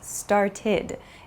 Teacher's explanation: it has an ID sound it's not an ed sound but an ID sound